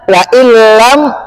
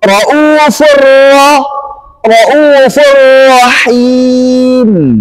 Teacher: memasukkan nun sukun atau tanwin ke huruf lam dan ra dengan menjadi satu huruf yang bertasydid tanpa disertai dengan dengung. Nggak ada lagi yang salahnya, tanpa dengung. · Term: idgham bila gunnah